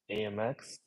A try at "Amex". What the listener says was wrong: The way I'm hearing you say this, see, it's like American Express. I'm seeing you say AY dash MEX, or AYA MEX.